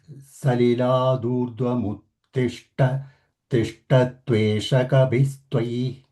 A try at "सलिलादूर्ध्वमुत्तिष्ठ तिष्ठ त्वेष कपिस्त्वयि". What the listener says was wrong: Mahaprana has not come. Tishta and Uttishta. Uttishta, Tishta. That is the pressure. So it has not happened.